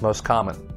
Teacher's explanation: we usually drop the t sound where it sounds like most common the most common words in